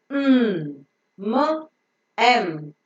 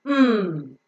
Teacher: pressing each other so that the oral cavity is completely closed the air that is coming out from the lungs has to go through the nose and not through the mouth in order to enable the air to go through the nose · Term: nasal sound